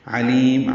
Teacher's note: شیء کیونکہ عین حروف اظہار میں سے ہے، اظہار حلقی ہے. علیم عین وسط حلق سے ادا ہوگا · لی یا مدہ ہے، لمبا کر دیں گے وقفاً مد عارض سکون بنا کے، اور اس پہ میم ساکن پہ وقف کرتے ہوئے ہونٹ بند کر لیں گے، اظہار ہوگا، اظہار شفوی